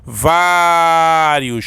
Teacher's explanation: Qual é a sílaba mais forte, professor? É no vá. Então nós temos aqui uma paroxítona.